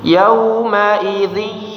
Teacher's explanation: Di suaranya ada dengung ya, masuk ke hidung ya.